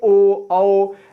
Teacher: अब ओ बोलिएगा ना तो होठ आपका गोल हो जाएगा